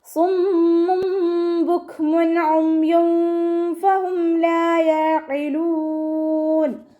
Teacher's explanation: തെൻവീനിലുള്ള നൂനിനെ നമ്മൾ മീമാക്കി മാറ്റി മറിച്ചിട്ടാണ് ഓതുന്നത് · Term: ഇഖ്ലാബിൻ്റെ മീം